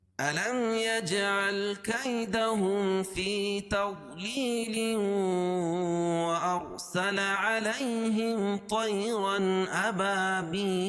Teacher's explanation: ملا کے پڑھیں گے تو ادغام مع الغنہ ہو جائے گا